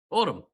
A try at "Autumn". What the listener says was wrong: Why are you putting so much? Why are you putting so much emphasis on the O?